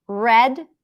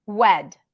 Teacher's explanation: like swimming inside your mouth until it hits the right place so it doesn't have that Hollow empty sound of the W sound